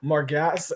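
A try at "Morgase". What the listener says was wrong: Why more gas? More gaze. A-S-E, it's an ace. Margas would be more like G-A-S-S.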